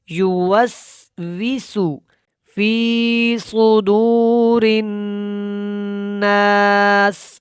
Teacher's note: فی کے بعد جو صاد ہے یہ موٹا ہے اور دو کو تھوڑا لمبا کریں گے حروف مدہ کی وجہ سے